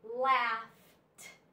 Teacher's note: this suffix is the suffix e d but it sounds like T